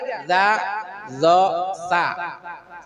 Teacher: sanatainil Ul yatain tuh jadi tful lisan watarfus sanatainil Ul yatain ujung lidah dan ujung dua gigi